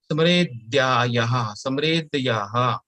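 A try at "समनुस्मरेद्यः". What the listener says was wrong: Yaha is not there. Smaredhyah.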